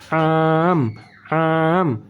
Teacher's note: sukun an kita baca yang kedua am Ain bertemu dengan mim Ain letaknya tadi makhrajal Ain di tengah kerongkongan